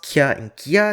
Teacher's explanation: The velar stops ka and ga become palatal stops kya and kya next to front vowels